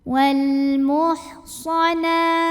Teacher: Di sini ada hukum alif lam qamariyah karena ada alif lam yang menghadapi huruf qamariyah yaitu mim. Maka lam sukun kita bunyikan dengan jelas atau biasa disebut dengan idhar qamari.